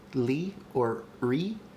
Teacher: if i say something like li or re i don't hear any schwa there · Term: approximate consonants